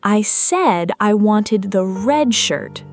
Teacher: I said I wanted the red shirt, not the blue one. Here, red receives dramatically heavier stress than it normally would in a neutral sentence, specifically because the speaker is correcting a misunderstanding.